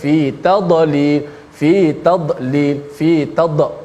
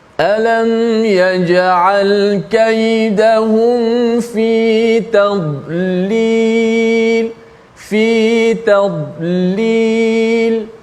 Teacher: Tapi dad bukan huruf qalqalah. Walaupun dia mati, jangan bunyikan qalqalah.